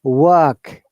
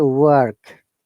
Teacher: in british english british pronunciation we do not pronounce r in 99 percent cases r is silent and they are replaced by the vowel sound whereas in american english r must be pronounced